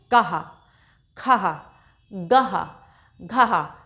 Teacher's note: इसमें हल्की सी ह की ध्वनि निकलती है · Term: अः की मात्रा